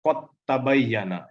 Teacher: Di sini idgham mutamatsil lain, ya. Jadi karena dal dan ta itu makhrajnya dekat, maka langsung disambung. Dalnya jadi tidak dibaca, langsung dimasukkan ke dalam ta.